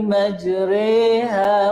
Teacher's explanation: Dari segi istilah, kita menyebut baris atas condong kepada baris bawah. Imalah ini ada satu saja contoh, iaitu dalam surah Hud ayat yang ke-41.